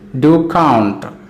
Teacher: do is unstressed count is stressed